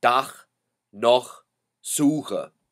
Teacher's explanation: If the CH follows an A, an O, or a U, it is pronounced by making a guttural sound like in the English or the Scottish word loch